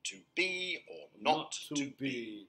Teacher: the first syllable is unstressed and the second is stressed